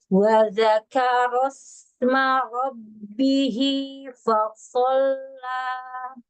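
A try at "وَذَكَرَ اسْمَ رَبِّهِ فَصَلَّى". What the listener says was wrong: Nah, fa sama sod masih terbawa tebal fa-nya. Ro-nya keluarkan takrirnya.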